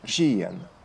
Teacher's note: Among the Czechs, when the palatalized sound r in their medieval pronunciation became hissing, rujen began to sound as ržijen and is still pronounced this way until today.